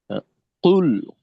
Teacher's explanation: কফের ধাক্কাটা খুব জোরালো থাকবে